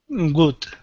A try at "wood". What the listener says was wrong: Okay, now with the W at the beginning, you're pronouncing a G, saying good. Instead of g, it's wood.